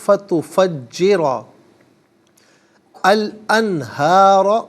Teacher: را پر زبر کو الانہار کے لام ساکن کے ساتھ ملائیں گے، درمیان میں سے الف یعنی حمزہ کو حذف کیا جائے گا۔ انہارہ میں نون ساکن ہے، اس کے بعد حرف حلقی ہا آ رہا ہے، تو یہاں نون ساکن پر اظہار کریں گے، اخفا یا غنہ نہیں کیا جائے گا، اور ہا کھڑا زبر ہا اور ہا الف زبر ہا دونوں طریقوں سے پڑھنا درست ہے۔ · تفجرہ میں را پر زبر ہے، را کو پر کر کے پڑھیں گے، اور اسے را پر زبر کو الانہار کے لام ساکن کے ساتھ ملائیں گے، درمیان میں سے الف یعنی حمزہ کو حذف کیا جائے گا۔